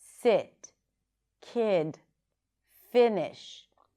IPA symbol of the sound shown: ɪ